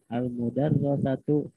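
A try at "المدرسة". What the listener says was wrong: Al-madrasatu. Madrasatu. Madrasatu dibaca mudarrisah. Madrasah itu sekolah. Kalau mudarrisah itu guru perempuan. Tidak salah sih ya baca mudarrisah. Cuman tidak munasib.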